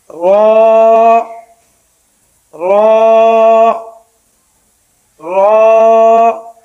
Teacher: را کا مخرج زبان کی نوک جب اوپر کے دانتوں کی جڑ کے قریب اوپر کے تالو سے لگے، تھوڑا سا منہ کھول کر یعنی را کو موٹا کر کے پڑھیں گے، را را را۔